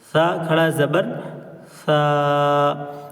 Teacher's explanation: زبان کی نوک اور اوپر کے سامنے کے جو 2 دانت ہیں یعنی ثنایا علیہ، اس کے کنارے پر لگاتے ہیں تو سا کی آواز نکلتی ہے